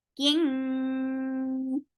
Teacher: this is ikhfa. You're keeping the sound in your nose very nicely.